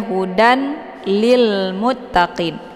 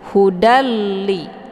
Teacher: Jadi kita enggak boleh lagi bacanya hudan ya, jangan dibaca hudan lil muttaqin. Jadi tanwin ini ataupun bunyi n ini dibuang ya · Jadi tanwin ini ataupun bunyi n ini dibuang, ya. Jadi kita langsung aja buat tasydid ke sini, hudalli. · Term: idgham bila ghunah, idgham bila gunnah